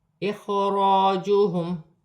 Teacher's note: اخراجوہم، الف سے پہلے زبر ہے، الف مدہ بن رہی ہے، را پر زبر کی حرکت ہے، را موٹی پڑھی جائے گی